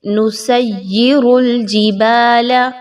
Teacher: یا میں آپ نے سیٹی کی آواز کو جتنا ہو سکے ختم کرنا ہے، سین کو یا کے ساتھ مضبوطی کے ساتھ ملاتے ہوئے